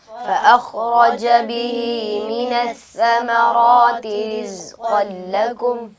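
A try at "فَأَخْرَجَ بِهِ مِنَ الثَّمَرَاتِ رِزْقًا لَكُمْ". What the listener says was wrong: बेटा आपके खौ की अदायगी में कलकला हो रहा है। खौ को जब अदा करें उसमें कलकला नहीं होना चाहिए, आवाज़ अपने मखरज में दोबारा लौट कर ना आए। फ़अख़रज नहीं, फ़अख़रज बिहि मिनस्समराति रिज़्क़न लकुम।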